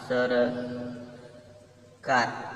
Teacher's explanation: चार अक्षरी शब्दातील दुसऱ्या अक्षरातील अ हा अपूर्ण उच्चारला जातो